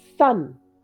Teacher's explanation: the s comes from the tip of the tongue.